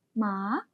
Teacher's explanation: With the third tone, a falling rising tone, it becomes ma, meaning horse. · If we put a second tone, a rising tone on it, it becomes ma